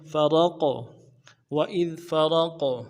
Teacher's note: غا کو موٹا کریں گے، اور قاف کے ساتھ ملانا ہے، قاف حروف قلقلہ میں سے ہوگا، جب ساکن ہوگا تو موٹا کریں گے